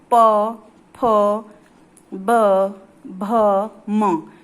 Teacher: जिन वर्णों का उच्चारण ओष्ठ से होता है उन्हें ओष्ठ कहते हैं। आप देखेंगे जब आप बोलेंगे तो आपके दोनों होठ आपस में स्पर्श करते हैं